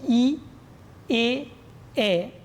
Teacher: ই এ এ, ঠোঁট প্রসৃত হলো, তাই প্রসৃত বা প্রসারিত স্বরধ্বনি